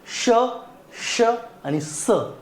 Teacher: उष्मे ह्या वर्णांचा उच्चार करताना घर्षण होतं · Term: घर्षक वर्ण